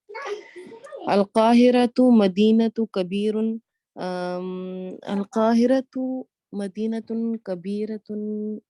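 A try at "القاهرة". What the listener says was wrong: القاہرہ تو ہے بھائی، الف لام لگ جائے تو تنوین نہیں پڑھتے نا، الف لام لگ جائے تو تنوین نہیں پڑھنی.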